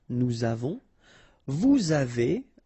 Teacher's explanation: final S not pronounced, and then we make this little link between the two